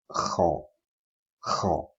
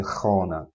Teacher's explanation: Kha comes from the top part of the throat and the upper roof of the mouth